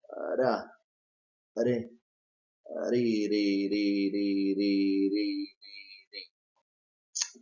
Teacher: You produce it by touching the back of your teeth, what we call the alveolar ridge here, with the tip of your tongue. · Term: flap T or D